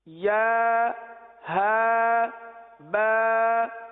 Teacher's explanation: یا جو ہے یہ وسط لسان، وسط تالو، زبان کے درمیان اور تالو کے درمیان سے ادا ہوتا ہے، اور ہا جو سینے سے متصل حلق ہے یہاں سے ادا ہوتا ہے